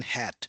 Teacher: This is the a sound as in hat. It is perceived as a short a.